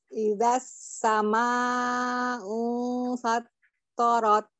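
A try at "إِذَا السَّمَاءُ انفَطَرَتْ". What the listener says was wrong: Jangan diputus di fattarat itu jangan karena di situ juga tidak ada tasdid ya.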